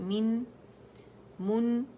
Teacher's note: من کے لیے آواز 1 کاؤنٹ کے لیے نیچے جاتی ہے، من، من، اور میں نے اس کے میم کو بھی نرمی سے دونوں ہونٹوں کے خشک حصوں سے پکڑا